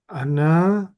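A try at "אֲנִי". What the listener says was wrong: Ana itu bahasa Arab. Ini ani. Ani.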